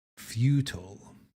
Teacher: Futile also has that first beat emphasis.